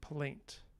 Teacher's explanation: you have a stop, which is very low sonority, then a liquid, then a vowel, and then an off glide of that diphthong, then a nasal, and then another stop. Right, plaint, like in complaint, that syllable.